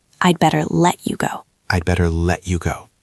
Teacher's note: Notice the stress. We stress the word let.